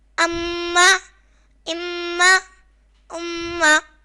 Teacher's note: میم زبر ما اما حمزہ میم پیش میم زبر ما اما یہاں میم حرف مشدد ہے تو اس لیے ہم میم میں غنہ کریں گے